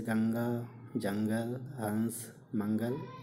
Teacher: अनुस्वार, इसका उच्चारण करते समय हवा केवल नाक से निकलती है, इसे बिंदु के रूप में दर्शाया जाता है, जैसे गंगा, जंगल, हंस, मंगल इत्यादि।